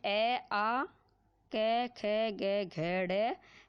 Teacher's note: तो कंठ में ए, आ, क, ख, ग, घ, ड़ है तथा विसर्ग